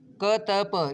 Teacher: क त प, ये कोई भी वर्ण इसमें घोष नहीं है, ये है अघोष